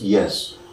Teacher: a word like yes with the pitch of the voice rising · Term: rising tune